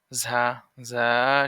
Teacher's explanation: সামনের নিচের দাঁতের আগা হতে শীষ সহ পাতলা ভাবে আদায় হবে